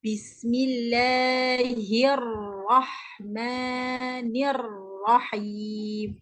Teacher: Dia baris bawah hi, bukan hiu.